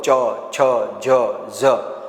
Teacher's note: તાલવ્ય વર્ગ એટલે આ વ્યંજનોને બોલવાને માટે આપણે તાળવાની જરૂર પડતી હોય છે તમે બોલો ચ છ ઝ ઝ તાળવાની જરૂર પડે છે એટલે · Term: તાલવ્ય વ્યંજન